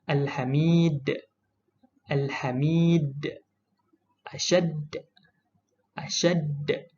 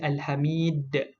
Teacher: Kita baca dengan detakan yang kuat huruf qalqalah dal di belakang ini. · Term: qalqalah kubra